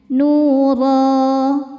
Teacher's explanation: Cara bacanya dibaca panjang dua harakat tanpa ada bunyi n-nya. · Ro madnya ini mad iwad karena ada baris fathah tanwin yang diberhentikan. Cara bacanya dibaca panjang 2 harokat tanpa ada bunyi n-nya.